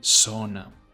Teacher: The pronunciation of the letter Z in Spanish will vary per country, but as a rule of thumb, in Spain, it will make a th sound, so the word itself will be zona, whereas in Latin America it will be an S sound